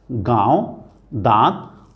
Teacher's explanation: अब चंद्र बिंदु या अनुनासिक जो है इसका उच्चारण नाक और मुंह से होता है